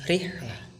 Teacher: ro di sana dibaca tipis dan tidak tebal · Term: tarkik